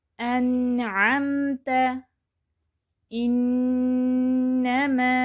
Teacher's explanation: درمیانی کیفیت سے ہم اسے پڑھیں گے، نہ آواز پوری بند نہ پوری جاری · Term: نون ساکن